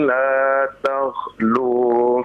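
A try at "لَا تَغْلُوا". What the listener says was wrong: Perhatikan Pak, ya, huruf yang Bapak ucapkan ghain, ya, la tag, bukan kha, ya. Nah, jadi harus jelas. La taghlu fi dinikum ghairal haqq, ya.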